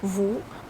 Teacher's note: when you pronounce ou, you pull your tongue back